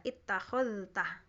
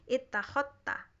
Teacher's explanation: za ketemu ta itu jadi idgham ittakhadta, za-nya nggak dibaca gitu ya